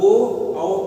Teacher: ओ और औ को कंठोष्ठ वर्ण कहते हैं। मतलब ओ औ तो माने ओ औ का उच्चारण स्थान कंठ और ओष्ठ है।